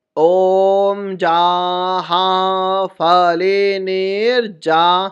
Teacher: य की जगह इसको जा का उच्चारण देंगे